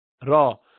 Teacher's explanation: ب دیکھیے دو سرفیس الگ ہوئی. را زبان اوپر ٹکرانے کے بعد پھر واپس آ جاتی ہے، الگ ہو جاتی ہے، را وہیں لگی نہیں رہتی.